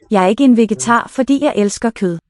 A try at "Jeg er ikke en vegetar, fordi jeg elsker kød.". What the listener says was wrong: Vegetar is the first heavy syllable there. Ikke. So what's written as a double voiceless sounds to me like a simple voiced. Ikke. Vegetar. Clear long word with final stress, like German does. Fordi.